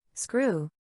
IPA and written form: ˈskruː (Screw)